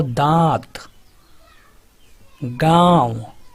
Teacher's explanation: अनुनासिक में जो उच्चारण होता है मुख के साथ नाक से भी होता है